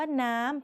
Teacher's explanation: คำว่าน้ำเป็นรูปโทแต่เสียงตรี